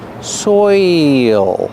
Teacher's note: you have the oi sound followed by the dark L soil there's an extra sound there it's not soil soil it's